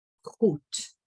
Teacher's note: The D at the end is a T.